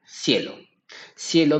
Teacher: tenemos la unión de una vocal cerrada más una vocal abierta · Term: dictongo